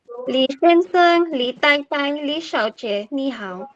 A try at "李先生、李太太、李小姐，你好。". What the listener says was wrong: Okay, go back and change your 太太. Okay, you're not aspirated.